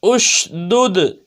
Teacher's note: دال حروف قلقلہ میں سے ہے اور ساکن ہے تو قلقلہ خوب ظاہر ہوگا